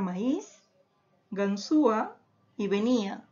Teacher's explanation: la tilde está recayendo sobre la vocal cerrada y por lo tanto hay una ruptura y entre las vocales porque inmediatamente está acompañada de una vocal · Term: hiato, hiato acentual